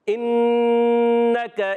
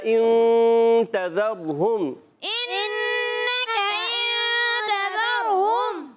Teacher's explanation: انک انتظرہم، إنك إن تذرهم دونوں غنوں میں فرق آپ کو محسوس ہوا ہوگا کہ نون مشدد کامل طور سے زبان لگ جائے گی، پھر یہ غنہ ادا ہوتا ہے، اور اخفا غنہ نون یہ چھپ جاتا ہے